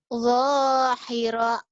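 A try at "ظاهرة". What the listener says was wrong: Za. Za. Bukan do. Za. Zahira.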